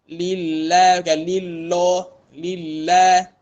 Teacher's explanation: lam bertasydid 2 harakat serta tarqiq